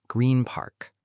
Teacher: N to P. P is a lip sound, so N becomes M.